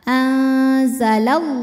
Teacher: lam pada lafaz Allah atau lam jalalah dibunyikan secara tafkhim sebab didahului harakat fathah maka bunyinya tebal